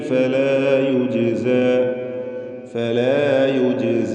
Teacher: ജാഅ ബിസ്സയ്യിഅതി ഫലാ യുജ്സ, യുജ്സ എന്ന് പറയുമ്പോൾ ജീമിൻ്റെ സുക്കൂൻ ഖൽഖല സുഗ്റ നൽകി ശബ്ദം ഹറക്കത്ത് പോലെ ചലിപ്പിച്ച് വ്യക്തമാക്കണം